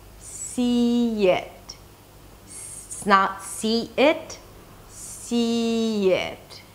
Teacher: if the first sound is an E sound, then we hear a Y sound. See it.